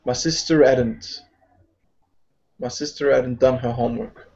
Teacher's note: So again, we drop the H.